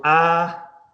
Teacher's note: it's a low vowel. The tongue goes down the chin goes down the triangle points down which is called isog the masculine vowel.